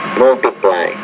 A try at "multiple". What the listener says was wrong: The first word is multiple, not multiply. Multiple.